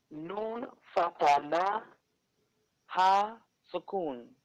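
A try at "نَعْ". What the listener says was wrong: This is ayn. Noon fata ayn sukun na. Ayn sukun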